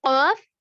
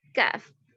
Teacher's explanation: زبان کی جڑ اوپر کے تالو کو لگنے سے, اس کے نرم تالو کو لگے تو قاف ادا ہوگا, اور اسے ذرا نیچے ہٹ کر لگے تو منہ کی جانب ہٹ کر لگے تو اس سے کاف ادا ہوگا